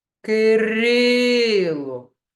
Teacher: кількість складів проплескуємо ки рило на який склад падає наголос Кирило ми голосом виділяємо другий склад Отже він наголошений